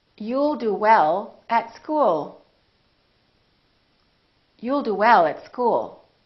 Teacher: you need to prolong the L keep it right behind the upper teeth